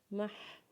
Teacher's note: میم کو جب ہا کے ساتھ ملائیں گے تو ہا کی آواز اپنے حلق سے نکالیں گے